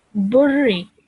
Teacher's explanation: So what this means is that we will join the ba to the ra with force and then produce the sound of the kasra